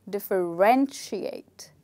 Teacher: we don't stress on the second syllable, we stress on the third syllable